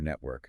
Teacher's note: An American bunches the tongue for the R, network. Right.